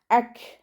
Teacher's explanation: കാഫ് സുക്കൂൻ ആകുമ്പോൾ കുറച്ച് എയർ പുറത്തോട്ട് പോണ സൗണ്ട് കൊടുത്തിട്ട് ഉച്ചരിക്കു ട്ടോ